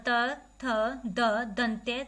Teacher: जब हम बोलते हैं तो दांतों से जीभ लगती है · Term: दंत्य